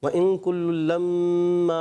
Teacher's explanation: میم مشدد ایک الف کا غنہ بھی کریں گے